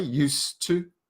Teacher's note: You don't really hear the D in the speaking anyway, used to. You don't say used, just because the next word is starting with a T, so used to.